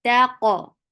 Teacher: Qaf will get qalqala and it is heavy too.